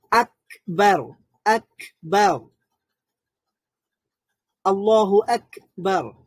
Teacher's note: আক বলার সময় কিন্তু সাউন্ডটা একবারে বন্ধ হয়ে যাচ্ছে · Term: শাদীদার হরফ